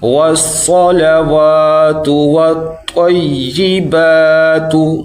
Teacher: وا کو تھوڑا لمبا کریں گے کیونکہ اس کے آگے الف ہے